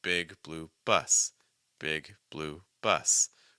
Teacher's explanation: and this is where you will get your heavy stress so a little bit of stress on your first word but your heaviest stress on the last